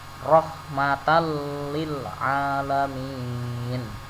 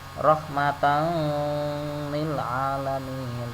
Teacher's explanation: Rahmatal lil alamin dibaca tidak ada dengungnya, tidak dibaca rahmatan lil alamin, tapi dibaca tanpa dengung. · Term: idgham bila gunnah